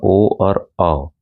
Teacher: कंठोस्थ कंठ और ओठों की सहायता से